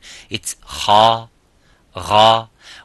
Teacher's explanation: do not use your lips when saying Gha or Kha. Lips, nothing to do. This is the makhraj. The point of articulation is the throat, it's not the lips.